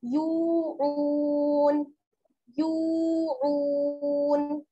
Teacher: या वाओ पेश यू या में और आगे जो है आइन, इसमें इन दोनों में क्या है वाओ मद्दा जुड़ा हुआ है, दोनों को बराबर के साथ खींचेंगे